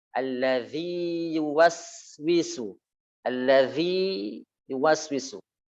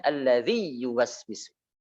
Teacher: Dan Hafiz tidak mengidghamkan ini. Hafiz tidak mengidghamkan, tidak membaca dengan idgham. Namun membaca dengan izhar.